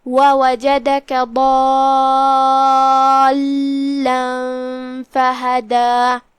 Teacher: ضالا فہدا اور جو کہ فا پہ زبر ہے اور اس کے بعد ہا پہ بھی زبر ہے اور دال پہ بھی زبر ہے تو یہ تینوں حرکات کا دھیان رہے. آخری میں مد طبیعی ہے لہذا 2 حرف کی مقدار میں ہم اپنی آواز لمبی کریں گے